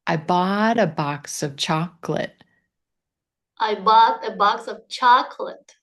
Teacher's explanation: try just putting your emphasis on bought and chocolate